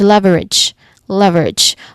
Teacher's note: So the final syllable has a soft J sound. The first syllable is clearly stressed